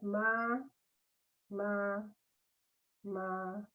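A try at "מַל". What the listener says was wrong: No, no, not meh. Look at that.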